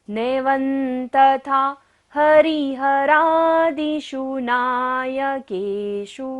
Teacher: व के ऊपर बिंदी है और बाद में क्या है? त वर्ग, त थ द ध न होता है, तो बिंदी का उच्चारण क्या होता है? न। नैवं तथा हरिहरादिषु नायकेषु, मूर्धन्य श है।